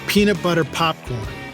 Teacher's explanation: hand in front of your mouth and say peanut butter popcorn feel that blast of air on your hand that will cause a terrible sound on your microphone called the plosive